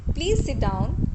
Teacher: Suppose you say that please sit down. Here I am using falling tone.